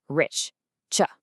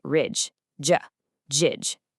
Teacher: One is voiceless, the other is voiced.